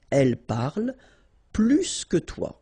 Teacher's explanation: if you want to compare with a verb, then in that case, remember, plus will be with the S. So pronounce it plus que.